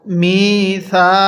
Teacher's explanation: মিমের মধ্যে আমরা এক আলিফ টান দিব জেরের পরে ইয়া সাকিন থাকার কারণে যেখানেই দেখবেন জেরের পরে ইয়া